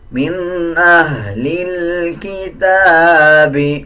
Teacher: تا کے اوپر کھڑا زبر ہے، 1 سیکنڈ لمبا کر کے پڑھا جائے گا